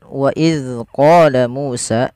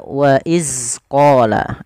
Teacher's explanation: Jangan sampai huruf dzal ini memantul. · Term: dzal yang berharakat sukun